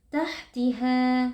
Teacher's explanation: adalah ikhfa Hakiki nun sukun dibaca dengan samar dan berdengung tahtiha pastikan huruf ha di situ mengalir nafas dan juga suara karena huruf ha bersifat hams dan juga rakhawah